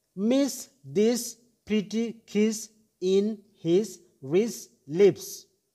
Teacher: this short vowel sound arises from i y and e letters tongue position is high front